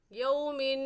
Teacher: یو کو بھی کھینچ کر نہیں پڑھیں گے کیونکہ یہ واو لین ہے